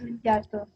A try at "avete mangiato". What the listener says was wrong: Perfecto. Avete mangiato.